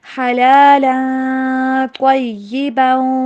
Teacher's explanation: ایہا الناس کلوا مما فی الارض حلالا، یہاں پہ تنوین ہے، تنوین کے بعد طاء متحرکہ آ رہی ہے، کیونکہ طاء جو ہے نا یہ حروف اخفاء میں سے ہے، تو یہاں پہ ہم کریں گے اخفاء